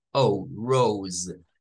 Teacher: La E al final no suena, pero nos le traslada un sonido largo a esa vocal que está antes de la S. O, rose. Y nótese que la S es vibrante en este caso. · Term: sonido largo para la O